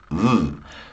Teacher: make an F sound f but use your vocal cords